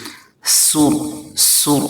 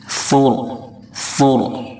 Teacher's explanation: فا کو نہایت نرمی سے پڑھیں گے، فا کی ادائیگی میں سین کی طرح سیٹی جیسی آواز نہ نکلے۔ سر سر اس طرح سے آواز نہیں ہونی چاہیے۔